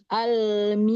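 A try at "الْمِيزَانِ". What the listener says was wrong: Tambahkan roh sofir pada zai.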